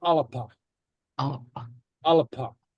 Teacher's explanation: the B is a little bit more plosive, more like a P, as in alapa.